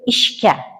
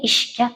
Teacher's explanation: o'zakdagi jarangsiz undosh sh affiks tarkibidagi jarangli undosh gni o'ziga qisman o'xshatadi, ya'ni jarangsiz kga aylantiradi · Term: assimilyatsiya